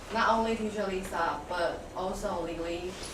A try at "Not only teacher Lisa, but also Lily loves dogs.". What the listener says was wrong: What was her problem? Intonation, emphasis, again, right? So, really emphasize on these two. Emphasis, not only about volume, but also about stopping and starting. The punctuation, how you do it.